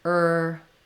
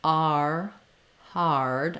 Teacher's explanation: And you want to just feel the difference when you're saying heard. If I say just heard, I don't really have to have any movement for that R sound. Versus hard, I have to glide to get my R diphthong.